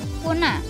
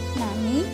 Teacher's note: Bunyi nasal laminopalatal atau N dilafalkan menjadi nasal lamino-alveolar N